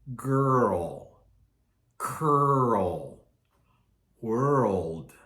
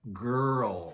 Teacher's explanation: when we say girl it's almost as if it has two parts high low stressed unstressed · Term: UR sound